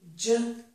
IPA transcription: dʒ